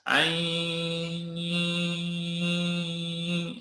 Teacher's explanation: ketika bunyi panjang ai, belum ada suara dengung, belum ada suara dari hidung